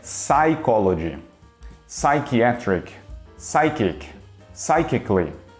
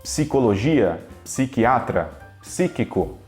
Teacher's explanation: no inglês é melhor você esquecer que esse P existe